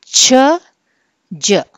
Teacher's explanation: ప్లాసివ్ లాగా స్టార్ట్ చేసి friction సౌండ్తో ఎండ్ అవుతుంది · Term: అఫ్రికేట్స్